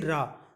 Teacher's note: तो आप देखेंगे जीभ थोड़ा पलटेगी, इसे लुंठित कहा जाता है, यानी पलट जाना।